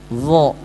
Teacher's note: Lidah yang depannya sama seperti sa dan za, lidah belakangnya diangkat ke atas.